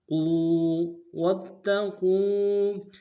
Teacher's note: إِن كُنتُمْ تعلمون۔ وَاتَّقُوا، واو کو تا کے ساتھ ملانا ہے، تا کے اوپر تشدید زور دیں گے اور قاف کو موٹا ادا کرتے ہوئے واو کے ساتھ ملانا ہے ، واو مدہ ایک مقدار میں کھینچیں گے، قو واتقوا یوما،